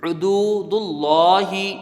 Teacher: پیش ہے، جلدی پڑھیں گے، دال کو واو سے ملائیں گے، واو ساکن سے پہلے پیش ہے، واو مدہ ہوگا، ایک الف کی مقدار اس کی رہے گی، کھینچ کے پڑھیں گے